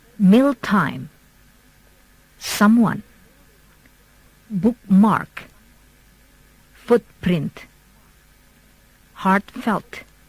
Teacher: compound words first syllable stressed